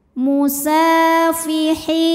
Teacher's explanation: karena huruf Sin berbaris fathah panjang maka huruf Sin kita panjangkan dua harakat